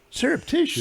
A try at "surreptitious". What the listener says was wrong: Surreptitious, not syrup. Surreptitious. Surreptitious.